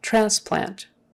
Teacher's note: the accent is on the first syllable